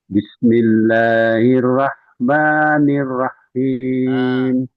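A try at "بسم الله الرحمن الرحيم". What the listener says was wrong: Hanya kurang hamis, kurang mengalir. Itu dengerin ya. Ya, hanya itu bukan berhenti tapi rah.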